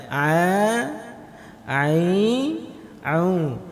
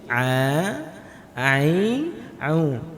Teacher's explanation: Huruf ain itu keluar jadi wasatul halqi. Min wasatil halqi, dari tengah tenggorokan.